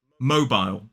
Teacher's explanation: Whereas in American English, that pronunciation of that letter O is more like O, mobile. And in the second syllable, in a modern British RP accent, we have that I vowel sound, mobile. Whereas in American English, it's full.